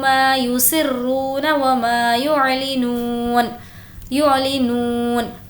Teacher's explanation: نون کو کھینچیں گے کیونکہ واو مدہ ہے